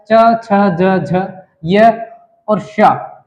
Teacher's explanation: यह हम मुख के तालू भाग से बोला जाता है